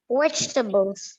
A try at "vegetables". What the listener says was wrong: 3. It's not 4. 3 syllables. You are just bringing a single sound there.